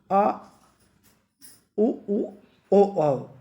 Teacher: जो जीभ के लास्ट एंड आखिरी हिस्से में बोला जाता है उसे तो बोलते हैं पश्च स्वर